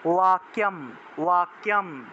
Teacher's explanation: এই বটা হলো অন্তস্থ ব, তাহলে উচ্চারণ হবে ওয়া